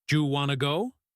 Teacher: We mash the sounds together. Do you becomes ju. Want to becomes wanna. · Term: connected speech